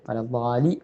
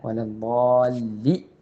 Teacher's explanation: വലദ്ദാലി അല്ല, വലദ്ദാല്ലി എന്നുള്ള ലാമിന് ഷദ്ദ് കൊടുത്ത് കട്ടി കൊടുത്ത് ഓതേണ്ടതുണ്ട്.